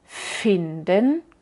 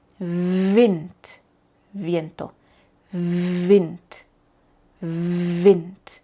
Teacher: cuando decimos F, en este momento, F, no usamos la voz como en finden, finden. Pero con la V usamos desde el inicio la voz.